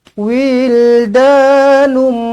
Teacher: tanwin 99 bertemu dengan mim sabdu jumpa dengan mim sabdu rapatkan terus bibir dengungkan dengan dua harakat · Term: Idam maal gunah